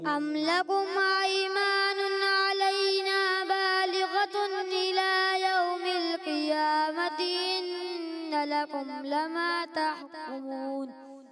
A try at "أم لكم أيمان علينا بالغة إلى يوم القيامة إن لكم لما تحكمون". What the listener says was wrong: ماشاءاللہ اچھے انداز سے کوشش کی مگر کہیں کہیں کاف جو ہے نا کاف قوف کی طرف تھوڑا سا پر کی طرف مائل ہوتا ہے آپ نے مائل نہیں کرنا ٹھیک ہے باریک رکھنا ہے ٹھیک ہے اور چیزوں پر بھی تھوڑی محنت کریں اب بڑھیں گے ہمارے امیر حمزہ بھائی کی طرف امیر حمزہ بھائی تیار ہے اعوذ باللہ